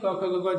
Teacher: पूरा अंदर से कंठ से आवाज आती है, गले के अंदर से, अंदर वाले भाग से, वहाँ कंठ है।